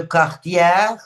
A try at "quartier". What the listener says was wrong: pas quartière, mais quartier, oui.